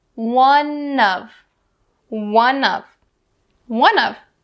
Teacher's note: We'll bring that n sound over to of.